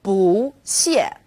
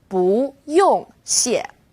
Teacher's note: When 不 is used before another fourth tone, it becomes second tone